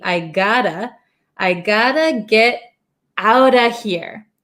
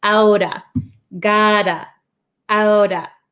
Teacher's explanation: I got to get out of here. So when we say it really quick, I gotta, this T becomes a flap T.